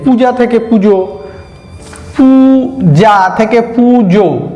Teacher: এই উ আ থেকে উ ও অনেকটা মানে কাছাকাছি চলে যাচ্ছে পরিশ্রম কমানোর জন্য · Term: স্বর সংগতির